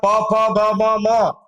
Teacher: આ ઓષ્ટિયમ બે હોઠ મિત્રો ભેગા થાય ને તો જ એ નીકળે